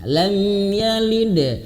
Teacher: di sini ada huruf dal yang sukun, pantulkan ya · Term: qalqalah